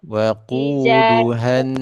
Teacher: jangan dipanjangin ha nya. Wa quduhan, han dan jangan isba ya.